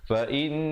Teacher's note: didengungkan di situ, wajibul gunnah 2 harakat